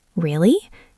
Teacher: Notice the intonation goes up and down.